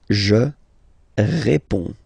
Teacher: you can see that D and S here are not pronounced